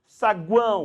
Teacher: você tem que lembrar que o som aqui é o som de U. Então é uma vogal no meio e 2 semivogais. saguão, porque o som é de U. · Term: tritongo